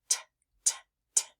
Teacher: did you notice your voice stays off for the sound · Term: T sound